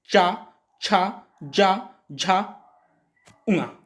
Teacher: तो आपकी जीभ थोड़ी सी उठ जाएगी, और उठ के कहां स्पर्श करेगी, तालू में, जो कोमल हिस्सा था ना जीभ के जस्ट ऊपर, वहां क्या करेगी, स्पर्श करेगी।